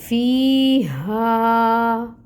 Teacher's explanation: فی یا مد کا رول ہو رہا ہے، یا ساکن سے پہلے کسرہ یعنی زیر کی حرکت ہے، یا مد ہو رہی ہے تو اس کو ہم 2 حرکت لمبا کھینچیں گے، 2 کاؤنٹس مقدار ہوگی۔ ہاں، الف ساکن سے پہلے فتحہ کی حرکت 2 کاؤنٹس مقدار ہوگی، اور اس ہا کو ہم اقصاء الحلق سے نکالیں گے، بھاری والی ہا ہے۔